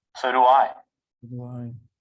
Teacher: A short Y and a short W sound between the vowels. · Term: linking